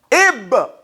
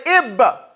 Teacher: with qalqala resounding loud, the ba blurts out its name